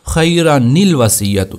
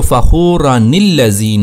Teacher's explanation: اس نون ساکن کو ہم نے دے دی زیر، تو یہ بن گیا نون قطنی